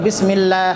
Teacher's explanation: اور دو حرف جو ہے اللہ کا لام اور را، یہ لازمی نہیں ہے، یہ عارضی ہے، کیونکہ اس سے پہلے کسرہ آ جائے گا تو اللہ لام موٹا نہیں ہوگا